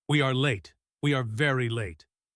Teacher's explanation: The repetition and the emphasis on very showed his anxiety.